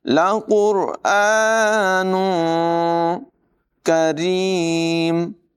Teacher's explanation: काफ की आवाज़ भी बारीक है, रा को भी बारीक पढ़ेंगे।